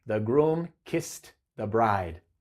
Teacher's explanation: kiss termina con una S, que es una consonante sorda. Entonces, ed va a sonar como una T.